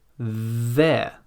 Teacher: the tongue is just a little bit out of the mouth but still between the teeth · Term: voiced th